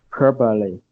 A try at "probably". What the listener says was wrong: But let us also emphasize the b sound on the last syllable. Probably. Bly.